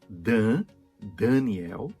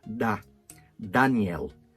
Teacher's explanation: no português a gente faz a N modificar o primeiro A, an, e a mesma N modificar o segundo A, na. Tá? Coisa que não acontece no espanhol. O mesmo acontece no nome Daniel.